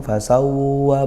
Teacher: Sawwa, tekan ya, ditekan, bukan dengung. Fasawwa, bukan, itu seperti nun sukun bertemu wawu. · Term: wawu bertasydid